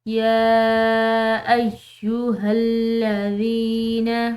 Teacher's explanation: یا اس کے اوپر کھڑی زبر ہے، ساتھ میں یہ چھوٹی مد ہے، تو اس کو ہم پڑھیں گے کھینچ کر یعنی کہ لمبا